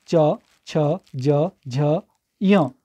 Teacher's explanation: जो हमारी जीभ का आगे वाला हिस्सा है ना वो हमारे तालु से टकरा रही है, तब इसे तालव्य कह रहे हैं, ठीक है।